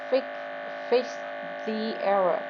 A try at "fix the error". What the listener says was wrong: I want to hear the X.